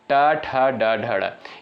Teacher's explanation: इनका उच्चारण स्थान जो होता है मूर्धा से होता है